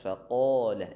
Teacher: huruf fa tipiskan, istifal sifatnya tertarqiq fa, faqala, kemudian qaf tebal, lam tipis, jadi tipis tebal tipis